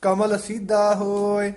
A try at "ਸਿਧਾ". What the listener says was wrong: ਸਿੱਧਾ ਭਾਰਾ ਉਚਾਰਨ ਕਰਨਾ ਹੈ ਤੱਦੇ ਨਾਲ।